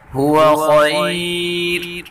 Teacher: خا کو اوپر پڑھیں گے اور را کو وقف میں باریک پڑھیں گے